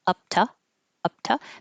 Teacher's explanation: This stays a T because the p before it is voiceless. So I keep my voice off.